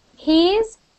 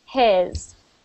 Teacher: It is not just a short E. So the first one, yes, it is called a long E, but the other one with the I is actually I, not E.